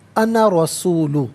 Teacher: الف مدہ تو موجود ہے لیکن یہاں پر بغیر کھینچے پڑھیں گے